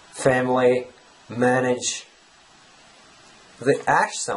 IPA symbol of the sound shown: æ